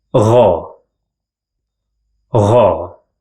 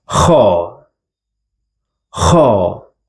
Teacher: Gha is like the sound you make whenever you put some water around your throat and start moving them around, while kha is the snoring sound.